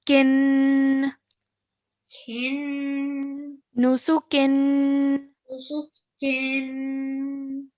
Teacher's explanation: the nasal sound is where you're going to hold it, not before that